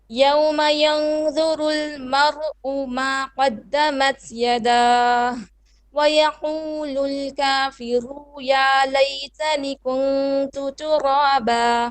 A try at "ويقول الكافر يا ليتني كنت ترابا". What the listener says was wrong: Okay, you've swapped the long vowel and short vowel. It's ويقول الكافر short vowel. يا ليتني long vowel. Once again, it's ويقول الكافر يا ليتني كنت ترابا.